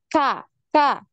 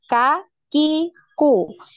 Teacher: ketika kita mengucapkan huruf kaf, ini seperti ada suara desisan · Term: hams